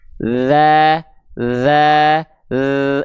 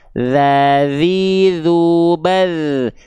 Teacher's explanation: Ujung lidah disentuhkan ke ujung gigi seri atas kita. Tipis-tipis. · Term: huruf dal